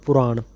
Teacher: ਪੱਪੇ ਨੂੰ ਔਂਕੜ ਨਾਲ ਪੁਰਾਣ, ਪ੍ਰਾਣ ਨਹੀਂ ਕਰਨਾ ਪਾਠ, ਫਿਰ ਅਰਥ ਬਦਲ ਜਾਂਦਾ ਹੈ।